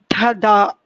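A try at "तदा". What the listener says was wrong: Tada. There is no Mahaprana there, just Tada.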